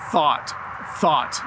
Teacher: My tongue is between my teeth when I say thought